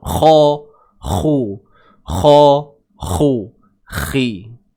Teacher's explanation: Min akhihi, huruf kha baris bawah, khi. Huruf kha tebal tuan-puan tapi macam biasa bila dia baris bawah dia tidaklah setebal seperti baris atas, seperti baris hadapan.